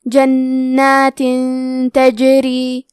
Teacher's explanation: کلمت جنات میں نون پہ تشدید ہے تو ہمیں دو حرف کے برابر نون کو پڑھنا ہے. آخری میں تا کے نیچے تنوین زیر ہے پھر حرف تا ہے.